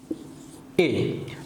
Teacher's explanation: যখন আমরা স্বরধ্বনি এ উচ্চারণ করি তখন আমাদের জিহ্বাটা কোথায় থাকে? সম্মুখে, অর্থাৎ জিহ্বাটা আমাদের সামনের দিকে থাকে। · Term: উচ্চ মধ্যম